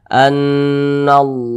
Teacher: lafaz Allah sebelumnya tanda baca fathah maka lafaz Allah dibaca tebal